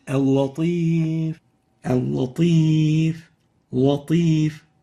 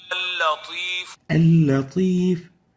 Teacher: giving tafkhim for the lam, velarizing it. While in this case it should have been attenuated, like this.